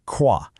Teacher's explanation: This sound comes from the back of your throat. It's like a little vibration, almost like you're about to gargle, but way, way softer. It's more of an airy, breathy sound. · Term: French R